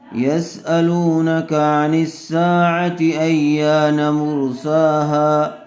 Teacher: یا کو کھینچیں گے، کیوں؟ اس لیے کہ زبر والے حرف کے بعد الف مدہ آیا ہوا ہے، لیکن نون کو نہیں کھینچیں گے، اس لیے کہ نون کے اوپر زبر ہے۔